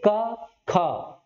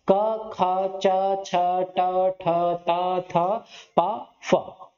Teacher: इनके उच्चारण में आपकी स्वर तंत्रियों में कंपन महसूस नहीं हो रहा है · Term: अघोष